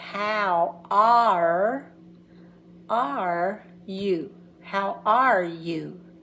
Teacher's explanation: So the R gets its own sound. It's almost like a vowel.